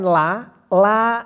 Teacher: ketika bunyikan la la itu tarkik la itu tipis